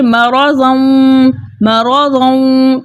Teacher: اگر ہم ادھر وقف نہیں کریں گے بلکہ وصل کریں گے تو وصل کی صورت میں یہاں پر قاعدہ ہوگا ادغام مع الغنہ کا